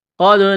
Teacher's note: قَدْ نَرَى تَقَلُّبَ وَجْهِكَ فِي السَّمَاءِ، یہ قاف ہے، بڑا قاف نقطوں والا، اس کو موٹا کرنا ہے۔ دال ساکن ہے، دال پر قلقلہ کریں گے۔ را کے اوپر کڑا زبر ہے، را کو موٹا کرنا ہے، ایک الف کے برابر کھینچنا ہے۔